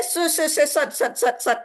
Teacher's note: tengah lidahnya itu menempel dan dibacanya tebal pada semua, sempurna pada semua harakat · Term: Shod tinggi